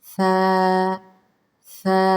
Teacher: سین کی سیٹی کی آواز نہیں نکالنی۔ فا فا، ٹھیک ہے، فا، دانتوں کے آگے والے حصے سے اس کو اندر والی کی طرف زبان کو ٹچ کرے، آگے والے دو دانتوں کی طرف ہلکا سا نرمی سے، سیٹی تو بالکل بھی نہیں آنی چاہیے نا، نرمی کے ساتھ۔